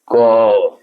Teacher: यदि आप क का उच्चारण करते हैं जैसे क तो क्या सुनाई दे रहा है अ सुनाई दे रहा है